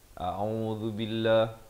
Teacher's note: zal di hujung lidah dengan baris dhammah